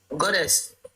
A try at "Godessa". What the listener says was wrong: It's actually Godessa. There's an SA.